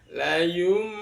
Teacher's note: ada tanda mim kecil artinya bahwa bunyi n atau bunyi nunnya di baca menjadi mim seolah-olah berbunyi mim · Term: iqlab